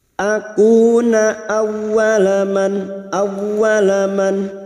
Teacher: masuk pada huruf ww yang bertasjid hanya masuk tanpa ditahan lama-lama tanpa mendengung